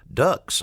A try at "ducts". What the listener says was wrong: you said ducks like quack quack.